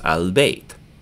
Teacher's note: when we say b at the beginning of the word, we use our lips. So we're not going to absorb the L in alif lam. So what we'll do sometimes is in a very fancy vowel text, you will see someone draw a sukun up here to remind you that the L is going to sound and blend into the B.